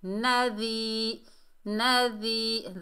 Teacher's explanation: یہ یا مدہ ہے، ایک الف کی مقدار کھینچ کر پڑھیں گے